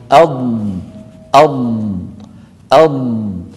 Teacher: ولاحظوا بأن صوت الضاد رخو، يعني قابل للمط